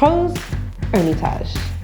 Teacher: And Rose, kind of have to growl your R on that one.